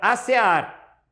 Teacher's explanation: Acear é uma oxítona, o ar é que é forte.